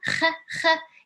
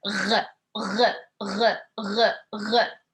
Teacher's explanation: Kh, Kh. It's just Kh like really soft, and the R is like there is a vibration. So we say R, R, R, R, R.